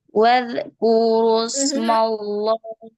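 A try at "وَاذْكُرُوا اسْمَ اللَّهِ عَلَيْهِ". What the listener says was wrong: Jangan pantul, jangan memantul zanya.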